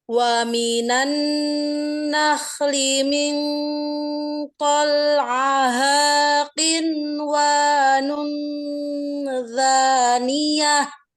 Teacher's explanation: Dalnya ini lidahnya agak nyempil ke bawah gigi. Akhirnya kayak zal. Da. Jangan sampai ke gigi.